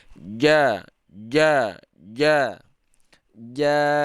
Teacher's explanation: tidak keluar angin saat kita membaca huruf Jim